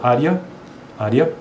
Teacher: por mais que seja um e né e a na verdade na pronúncia é i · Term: ditongos crescentes